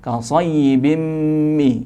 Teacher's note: kasrotain bertemu dengan mim, idgham bi gunnah